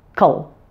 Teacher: that K sound is combined with a final L sound which is both a dark L and a syllabic L so that last syllable sounds like this Cole do you notice